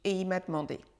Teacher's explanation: Il disparaît presque et il est presque avalé par le « i » et il m'a demandé. Il, le pronom sujet est lui aussi contracté, il devient « i »